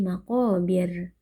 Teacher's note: Ra sukun yang sebelumnya kasrah hukumnya adalah tarqiq atau tipis. Jadi kita membaca dengan lidah yang datar tanpa perlu ditebalkan.